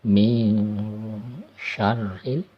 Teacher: Min ini hukum nun mati atau tanwin ketika bertemu huruf sya, namanya ikhfa ya. Jadi huruf nunnya disamarkan, bukan min, tapi samar-samar masuk ke dalam huruf sya ya.